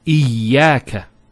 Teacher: Notice the ya gets a double vowel because of the Shaddah there.